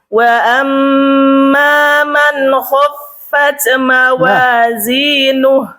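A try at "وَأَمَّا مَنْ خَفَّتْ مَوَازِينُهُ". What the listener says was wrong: Tak, bunyinya jangan c ya.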